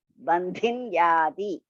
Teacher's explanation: Ba is Alpa Prana. Dhi is Mahaprana.